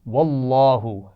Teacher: واللہ لام جلالہ ہے، اس سے پہلے زبر آ گیا ہے تو اس کو موٹا پڑھا جائے گا، اور لام جلالہ پر کھڑا زبر بھی موجود ہے، ٹھیک ہے.